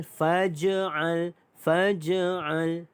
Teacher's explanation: Faj'al di sini adalah huruf qalqalah, huruf jim yang ada tanda mati asal, maka detakan kecil.